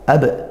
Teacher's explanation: ada ba sukun dibaca Qalqalah Sugra Qalqalah yang kecil ya Qalqalah yang ringan